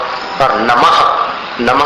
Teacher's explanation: नमः में जो विसर्ग था ना, उसका उच्चारण भी गले के सहारे होगा